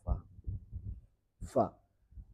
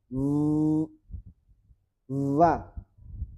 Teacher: fa ini dominannya angin tidak ada suara yang namanya hames itu angin menutupi suara tidak tidak boleh seperti ini.